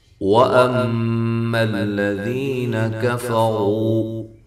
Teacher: میم مشدد پہ غنہ ضروری ہے،